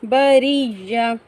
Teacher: بریہ، یہاں پر یا پر تشدید ہے، یا کو ہم یا سے پہلے را کے ساتھ میں سختی سے ملائیں گے، اور وقف کرتے ہوئے گول تا کو ہم ہا ساکن کی مانند پڑھیں گے